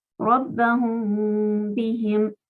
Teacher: La primera palabra termina con una mim que lleva sukun y la siguiente palabra empieza con una ba. Entonces acá sabemos que la mim hay que pronunciarla solo con un sonido nasal. · Eso es lo que se llama gunna en árabe. Gunna es la combinación de pronunciar por la nariz y detenernos 2 tiempos. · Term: ikhfa